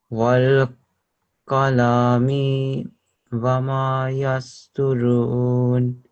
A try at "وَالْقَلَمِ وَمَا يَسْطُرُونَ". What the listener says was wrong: The only thing was over here on this lam, you read it as qalami. So that would make it incorrect because the stroke that's on the lam, do you know what the stroke is? What would you call it?